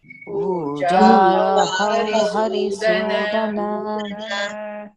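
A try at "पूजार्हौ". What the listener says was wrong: Pujarhau, that's a mistake. That Repa should come above the Hau. It is not Purjahu, Pujarhau.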